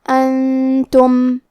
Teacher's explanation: کلمت انتم میں نون ساکن ہے، پھر حرف التا ہے، تا حروف الاخفاء میں سے ہے تو ہم یہ حکم کو غنہ کے ساتھ ادا کریں گے